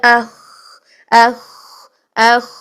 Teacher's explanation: تو کھرکھرا بالکل نہیں ہونا چاہیے خا میں. خا کو ادا کرتے ہوئے ہم مطلب ہے کہ آپ نے اس میں جو بیس بنانی ہے وہ بریتھ بیس بنانی ہے.